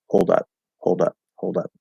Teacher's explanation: it becomes kind of flapped because that's what it does when it connects.